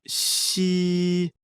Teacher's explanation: The pronunciation of xi, like the English word she, but with the tongue touching slightly the bottom teeth. The pronunciation is assisted by the teeth.